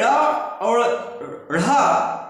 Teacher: इसे ड़ और ़ इस प्रकार से उच्चरित करते हैं तो हमारी जीवा ऊपर की ओर उछल करके जाकर के मुर्धा को टच करती है और फिर तुरंत वापस पलट जाती है